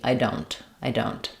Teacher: I'm going to use an unreleased T or a very light T.